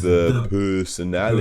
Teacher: rounds his lips for the nurse vowel